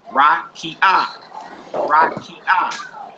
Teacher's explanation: The next one is rakia. It's stressed on ki.